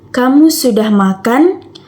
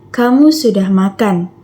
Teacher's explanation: Nada naik di akhir menunjukkan pertanyaan